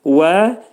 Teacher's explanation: V vəin məxrəci dodaqlar gönçələnir.